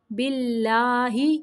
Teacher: اللہ کا نام باریک پڑھنا ہے